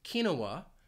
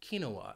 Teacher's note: pronounced with three syllables kinoa in which case the stress would be on that second syllable kinoa and that final syllable would just be that schah uh